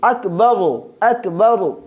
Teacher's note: اکبر کے آخر میں جو را ہے اس کو بھی ہم موٹا پڑھیں گے، کیونکہ را پہ زبر آیا ہے، اور یہ ہم نے قاعدہ بیان کیا تھا کہ جب را پہ زبر یا پیش ہو تو اس کو ہم موٹا پڑھیں گے، اور یہاں بھی را پہ پیش ہے لہذا ہم اس کو موٹا پڑھیں گے۔